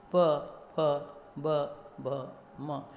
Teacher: हम जब इनका उच्चारण करते हैं प, फ, तो हमारे दोनों होंठ मिलते हैं आपस में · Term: ओष्ठ